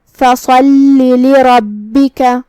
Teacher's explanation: لام پہ تشدید ہے، 2 حرف کے برابر ہمیں لام کو پڑھنا ہے. دھیان رہے ہم لام کو تشدید سے ادا کریں گے لیکن اپنی آواز لمبی نہیں کریں گے تاکہ مدیہ نہ ظاہر ہو. · صاد حروف التفخیم میں سے ہے، ہم اسے بھاری آواز میں منہ پھلا کے ادا کریں گے. لام پہ تشدید ہے، 2 حرف کے برابر ہمیں لام کو پڑھنا ہے.